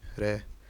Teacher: जब जीवानोक यानी अग्रभाग अत्यधिक गतिशील होकर वत्स से कई बार टकराती है तथा निश्वास से प्रकंपित होती है, तब कंपनजात ध्वनि उत्पन्न होती है